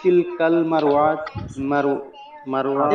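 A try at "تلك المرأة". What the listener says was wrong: মার আতি, ওয়াতি না, মার আতি। আর ইকদুন হবে না, হবে ইকদু, তানবিন হবে না,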